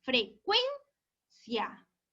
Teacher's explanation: la sílaba tónica en la penúltima sílaba. Por lo tanto, mi palabra es paroxítona.